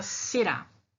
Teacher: Esse ra no final é a sílaba mais forte. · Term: oxítonas